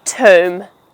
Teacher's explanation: The b at the end happens to be silent